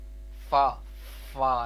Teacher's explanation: اوپر کے دانتوں کے کنارے، یعنی جو ہمارے اوپر والے فرنٹ والے دو دانت ہیں ان کے کنارے، اور نچلے ہونٹ کے تر حصے سے، یعنی نیچے والے جو ہونٹ ہیں ہمارے وہاں کے تر حصے سے، یعنی اندر والی سائڈ والا جو ہونٹوں کا تر حصہ ہے وہاں پر ہم نے دانتوں کا کنارہ لگانا ہے۔